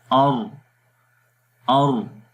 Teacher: تو جو پہلی صفت ہے را کے حرف کے اندر وہ صفت جہر ہے جس میں سانس بند ہو جاتا ہے۔ جب ہم را کو پڑھیں گے تو سانس بند ہو جائے گا